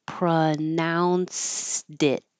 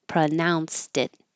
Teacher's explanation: And I'm holding the final T.